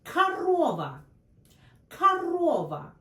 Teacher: See, when stressed, it's O. When unstressed, it's A.